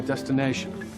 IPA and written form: ˌdes.tɪˈneɪ.ʃən (destination)